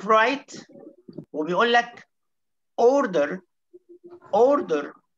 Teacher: جماعة الأمريكان إنجلش قالوا، اللهجة الأمريكية قالوا إيه؟ إحنا هننطق الآر في كل الحالات